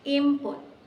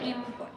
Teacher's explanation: The sound N changed to M because the next sound P is made with both lips closed. P, M, P. So our lips get ready to say P, and instead of saying N, we say M. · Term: assimilation